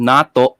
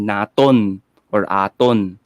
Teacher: instead of having glottal stop nato, for example, ang sasabihin nila ay naton or aton